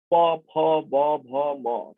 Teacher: প, ফ, ব, ভ, ম, তার সাথে উ কিংবা দীর্ঘ উ যখন উচ্চারণ করছি, ওষ্ঠের প্রয়োজন হচ্ছে। ওষ্ঠ বলতে ঠোঁট, ওপরের ঠোঁট, ওষ্ঠ নিচের ঠোঁট, অধর, এই দুয়েরই প্রয়োজন হচ্ছে, সেই জন্যই আমরা তাদেরকে বলছি ওষ্ঠ বর্ণ।